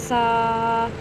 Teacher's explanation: زبان کی نوک کو تالو کے ساتھ لگا کے نرمی سے پڑھیں گے